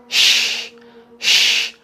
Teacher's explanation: Caranya adalah dengan mengangkat tengah lidah. Sama dengan mengucapkan huruf Y atau huruf J dalam bahasa Indonesia. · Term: huruf shin